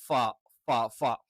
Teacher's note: ഫ എന്ന് പറയുമ്പം മുകളിലത്തെ പല്ല് അഥവാ മുൻപല്ലുകൾ അതെന്ത് ചെയ്യും? താഴെ ചുണ്ടിൽ ടച്ച് ചെയ്തുകൊണ്ടാണ് ഫ, ഫ, ഫ. പലര് വ എന്നുള്ളത് അതേപോലെ ഉച്ചരിക്കാറുണ്ട്, അത് തെറ്റാണ്.